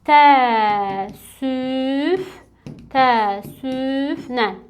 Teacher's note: Burda qoşa ə-lərdə düşmə hadisəsi baş verdi.